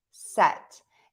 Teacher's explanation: And you can kind of see, my tongue is right in the middle of my mouth for that short E